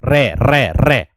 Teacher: आगे अगर बात करूं कि जिस व्यंजन ध्वनि के उच्चारण में जीभ उच्चारण जिस व्यंजन ध्वनि के उच्चारण करने पर जीभ की नोक वायु से रगड़ खाकर कांपेगी, आप मेरे दोस्त रे व्यंजन को लीजिएगा और रे का उच्चारण करोगे तो आपकी जो जीभ की नोक है वो कंपन कर रही होगी। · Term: लुंठित व्यंजन